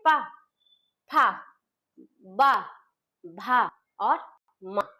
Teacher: पा वर्ग का उच्चारण स्थान जो होता है ओष्ठ, दोनों ओठों से होता है।